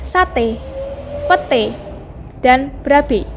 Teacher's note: Fonem E dilafalkan dengan cara menarik lidah agak ke dalam dan ke tengah, disertai dengan menghembuskan udara keluar, sedangkan bentuk mulut lebih dilebarkan sedikit.